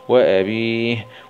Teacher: نقف عليها بالسكون العارض مع الهمس